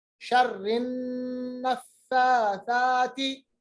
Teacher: ता का मखरज नरम है, जबान की नोक, ऊपर वाले दो दांत, सनाए उलिया का किनारा